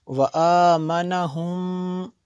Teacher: میم ساکن کے بعد دوسری میم ہے تو یہاں پہ ادغام شفی ہے